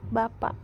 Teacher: Dan direalisasikan sebagai bunyi K tertutup, bentuknya yaitu fonem tanda tanya, apabila sebagai koda pada sebuah silabel, misalnya pada kata bapak.